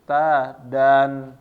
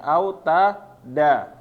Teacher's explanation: Nunnya ini annya menghilang, tapi dia bacaannya menjadi 2 harokat tanpa membaca annya atau nunnya ya. Annya ini jadi tanwinnya nggak dibaca. Jadi cuma dibaca panjang 2 harokat.